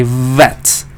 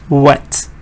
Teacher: you're saying W nothing is touching nothing this is what but when you say the V there's contact between your lower lip and your upper teeth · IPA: /v/